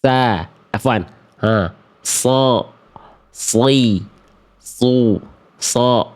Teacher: Boleh ke ujungnya, boleh ke giginya, boleh ke pangkalnya, ya. Ketika dia dilafalkan, dia akan mengalirkan desisan yang lembut. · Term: huruf shod